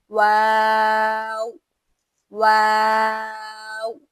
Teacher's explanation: यानी दोनों होठ गोल करके अदा किया जाता है। इसकी खुसूसियत क्या है कि हर्फ वाऊ दोनों हंठ को गोल करके अदा किया जाता है।